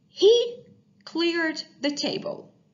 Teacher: The verb cleared, the ed ending sounds like d sound because the verb clear ends in a voiced sound, which is r sound.